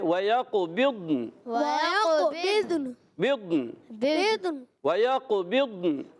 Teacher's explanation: ضاد پر زبر نہیں کرنا. ضاد کو ساکن رکھیں گے، ضاد بھی ساکن، نون بھی ساکن. وَيَقْ قلقلہ بھی قاف میں کرنا ہے.